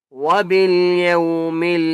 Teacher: یو کو ہم نے لمبا نہیں کرنا کیونکہ واو لین ہے